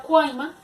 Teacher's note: La palabra cuaima también tiene tres vocales y lo mismo, es una vocal cerrada, una vocal abierta y una vocal cerrada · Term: triptongo